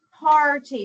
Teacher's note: that AR is saying R. It's not saying a short vowel or a schwa. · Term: R control